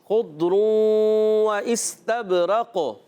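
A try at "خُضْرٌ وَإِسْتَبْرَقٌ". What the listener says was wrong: ضاد میں کلکلہ نہیں کریں گے، خضر واستبرق،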